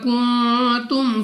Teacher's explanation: نون ساکن کے بعد تا اخفا قاعدہ ہے، غنہ کر کے پڑھیں گے